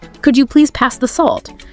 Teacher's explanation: your request sound more polite could you please pass the salt that Rising intonation at the end softens it